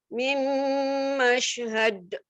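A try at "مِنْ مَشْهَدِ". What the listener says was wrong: Kenapa ragu-ragu di akhir tadi? Mashhad. Keluarkan qalqalahnya.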